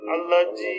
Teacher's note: জালটা হয় জিব্বার আগা দিয়ে, উপরে দাঁত জিব্বার আগার সাথে